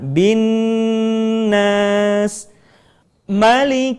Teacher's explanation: Perhatikan kalimat binnas kita tidak membacanya dengan tergesa-gesa menjadi binas tetapi tahan suara kita in atau lebih mudahnya kita bisa menggunakan jari kita untuk menghitung